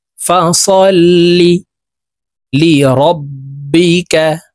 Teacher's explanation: তাসদিদওয়ালা হরফ লামকে একবার ধরবে, আবার লাম নিজের আরেকটি উচ্চারণ হবে, লাম জের লি।